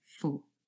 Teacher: Now, for officially has a long o, but usually this is not a stressed word, and so in its weak form it would be represented by schwa